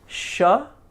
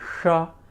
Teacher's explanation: We had a palatal sha, and we have a cerebral sha